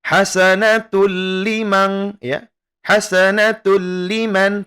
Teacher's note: idgham bila gunnah yang seperti sudah kita pelajari ya, di sini tidak didengungkan